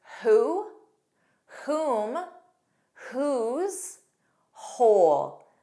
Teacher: Also WH spelling in the words who, whom, whose, whole. Notice there's no W. It begins on H.